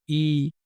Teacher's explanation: এই যে ই এ স্বর এই স্বরগুলো জীবের সামনের অংশ থেকে উচ্চারিত হয় · ই সামনের অংশটা স্পর্শ হচ্ছে। তো জীবের সামনের অংশের সাহায্যে উচ্চারিত এই স্বরধ্বনিকে বলা হয় সম্মুখ স্বরধ্বনি।